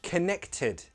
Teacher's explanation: true T, because the consonant sound just before is an unvoiced consonant sound. And no one glottalizes those.